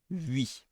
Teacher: it's the same as as a y yes yes but with the lips round